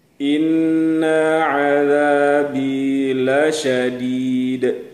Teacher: Inna ketika nunnya itu ditahan 2 ketukan. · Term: gunnah musyaddadah